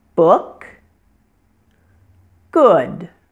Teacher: The O in this word is pronounced like the double O in the words book and good. This sound is pronounced with your lips rounded, your mouth a little open, your tongue is pulled back, and the muscles of your face and jaw are relaxed.